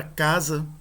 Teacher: na palavra casa, né, o primeiro A ele é um pouco mais longo do que o segundo A